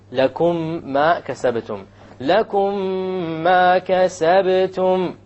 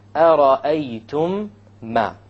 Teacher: You have a ghunna on the meme, and you will make the merging or the idgham, and there will, in the Quran it will be written with a shadda, so you'll even know that there will be a merging here. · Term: idgham shafawi